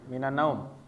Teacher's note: Terus naum ini dia dibacanya dalam keadaan waqaf, berhenti ya. Maka dia harus dipanjangin.